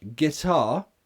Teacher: guitar the stress is on the second syllable so for that reason it's not a schwa